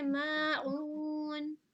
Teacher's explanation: मीम अलिफ जबर ठीक है। माँ को थोड़ा और खींच के पढ़ेंगे